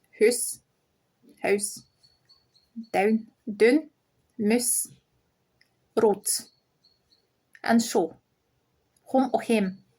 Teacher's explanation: Glasgow accent doesn't use diphthongs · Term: without diphthongs